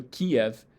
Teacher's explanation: if you go from an E to an E, you kind of get this yod, ya sound in the middle for free